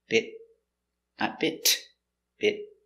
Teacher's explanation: Remember the T after the vowel is a stop T. So the tongue goes up.